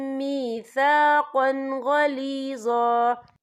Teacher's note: وَأَخَذْنَا مِنْهُمْ مِيثَاقًا غَلِيظًا، یا دیکھیں میثاقًا، قاف کے پر تنوین ہے، تنوین کے بعد جو ہے غین آ رہا ہے، اور غین جو ہے حروف ہلکی کا ورڈ ہے تو ہم یہاں اظہار کریں گے، ہم اسے بنا غنّے کے پڑھیں گے۔